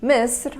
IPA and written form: mɪsˤr (Misr)